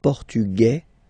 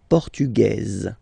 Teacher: it will be only in this z sound, the difference between the masculine form and the feminine form, okay? Masculine, Portugais, you don't pronounce the S.